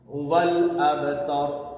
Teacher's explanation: واو لام زبر ول, ہوول. اب یہاں با پہ کیا ہوگا؟ قلقلہ, کمزور قلقلہ. ہوول ابتر, را کو موٹا پڑھیں گے.